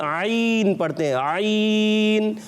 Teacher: हलक का दरमियान वाला हिस्सा यूज करते हैं, तो ये इसका मखरज है।